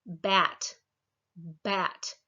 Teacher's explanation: There at the b, you can feel your vocal cords vibrating. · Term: voiced